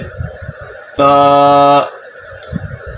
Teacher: یہ جو لفظ تا ہے یہ اس کا جو مخرج ہے یہ زبان کی نوک اور جو سامنے کے دانت ہیں اس کی جڑ، وہاں پہ زبان کی نوک لگے گی تو لفظ تا ادا ہوگا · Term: حروف نطعیہ